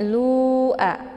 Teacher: Cara membaca lu adalah dengan memanjangkannya sebanyak empat sampai lima harakat. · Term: mad jaiz munfasil